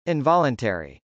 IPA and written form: ˌɪnvˈɑləntˌɛri (involuntary)